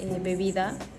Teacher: Y ahora hablaremos sobre la consonante B, que su punto de articulación es bilabial porque ambos labios participan en la pronunciación. Su modo de articulación es una consonante oclusiva porque detiene el flujo del aire al cerrar los labios.